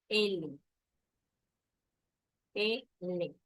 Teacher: Se articulan aquí a través, en este caso, del aire pulmonar por una o ambos lados de la cavidad bucal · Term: laterales